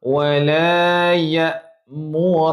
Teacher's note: ra baris atas dibaca ra, bukan ro. Jangan muncung. Okey? Wala ya'murakum, bukan mura.